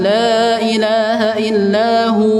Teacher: hu tetap panjang 2 harakat. Jangan dibaca pendek.